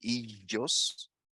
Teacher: there are some speakers of Cypriot Greek who would pronounce ilios with ye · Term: yeismo